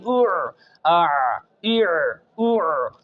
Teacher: حلق کے درمیان سے صحیح عین کی جگہ سے آواز نکالنی ہے۔